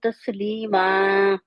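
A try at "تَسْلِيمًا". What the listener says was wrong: سین کو کلیئر کریں. تسلیما. ایسے ہی سین یسلمو سین کے بعد سیٹی والی آنی چاہیے.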